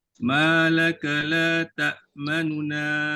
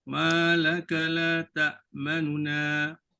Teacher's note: Nu bunyi didengari tetapi suara yang halus, suara yang perlahan banding dengan la, ta dengan na. Nu tu yang diperlahankan. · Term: rom